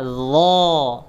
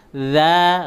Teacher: Bedanya kalau huruf lo itu tebal, huruf za itu tipis